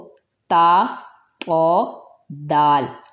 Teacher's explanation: مخرج نمبر 2 تا طو دال، زبان کی نوک اور سامنے کے دو دانتوں کے مسوڑے، اس سے تا طو دال ادا ہوتے ہیں۔ یہ تین حروف کا مخرج ایک ہی ہے۔